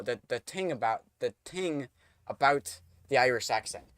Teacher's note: It's not the thing that's really hard, and I already messed it up because when you're doing a th, it's the thing. Nope, you have to pronounce the t, but do the th kind of sound like a ting